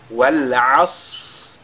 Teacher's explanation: le Sad, il a la caractéristique de Al-Hams. C'est-à-dire il y a l'écoulement de l'air qui se produit au moment de sa prononciation. Ce qui nous permettra d'allonger, n'est-ce pas, sa prononciation avant de lire la lettre Ra.